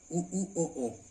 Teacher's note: वो होठ जो है व्रत बन रहा है, यानी होठ गोल हो रहे हैं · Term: व्रतमुखी